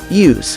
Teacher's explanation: if you're referring to the adjective use like what's the use pronounce it with an s at the end